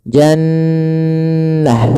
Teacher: Cara membacanya adalah suara nunnya ditahan dulu n ya. Jannah, tidak langsung jannah. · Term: bacaan gunah